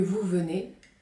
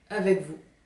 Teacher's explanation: ce z final a commencé à disparaître devant les consonnes et en fin d'énoncé.